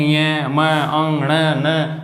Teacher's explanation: नासिका का मतलब होता है नाक, यानी जब हम उच्चारण करते हैं तो जो हवा है वो नाक से निकलती है या नाक से उच्चारण होता है। · जो पंचम अक्षर है इनका उच्चारण स्थान नासिका यानी नाक से होता है। जैसे इनका बोलेंगे ये म अंग ण न, उच्चारण करके देखिए आप, उच्चारण किससे होगा, नाक से होगा।